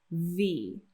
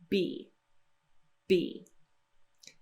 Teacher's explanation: we close the lips firmly and we release the air pressure in a burst